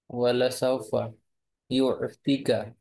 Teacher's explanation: ইউতিকা একালিফ টেনে পড়তে হবে